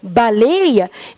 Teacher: Determinou que, da mesma forma como eu não acentuo baleia, que tem um ditongo, mas é fechado